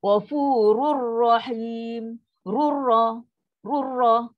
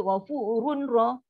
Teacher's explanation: Nun tu masuk terus pada ra 100% dia masuk. Tak ada dengung. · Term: Tanpa dengung